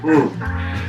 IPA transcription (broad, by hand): ŋ